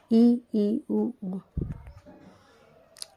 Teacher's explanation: संवृत, जिन स्वरों के उच्चारण में मुख द्वार लगभग बंद रहता है